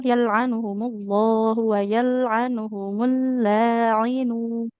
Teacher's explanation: pastikan lafadz Allah itu tebal yal'anuhumullahu wa yal'anuhumul la'inu.